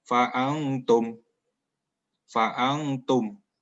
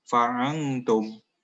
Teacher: Ada dengung di nun sukun, ini nun mati ya.